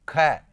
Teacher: ज्यादा मात्रा में प्राण वायु बाहर निकल रही है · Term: महाप्राण